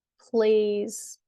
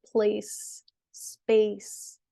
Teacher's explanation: plays has a Z sound, place and space have the S sound